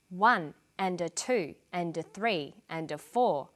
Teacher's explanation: the words I'm stressing are the numbers 1, 2, 3, 4. The less important words are squeezed in between the beats. The more squeezed in, the shorter they become. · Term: rhythm